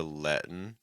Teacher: letting can get reduced to Lettin here notice that's a held T